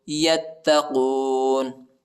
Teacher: تا پر جو ہے شد آئے، یا کو تا کے ساتھ ملائیں گے، تا کو شدت کے ساتھ سختی کے ساتھ پڑھیں گے